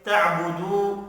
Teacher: واو مدہ ہے، اس کو بھی 1 الف کے برابر کھینچ کر پڑھنا ہے۔